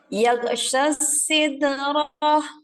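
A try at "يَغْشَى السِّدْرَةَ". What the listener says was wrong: Diulang, huruf shin ya, jangan jadi sin. Lagi, sya, coba sya.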